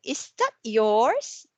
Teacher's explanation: Or to confirm something, is that yours? Just like that. So the voice is rising. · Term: rising intonation